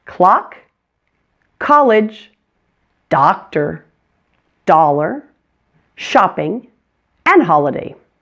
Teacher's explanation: So you can expect some of our English written O's to be pronounced as ah in English. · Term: short O